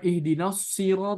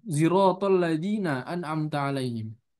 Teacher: Jadi shotnya diganti jadi zai dengan memonyongkan bibir. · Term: ismam